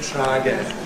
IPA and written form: ˈtraəˈgen (try again)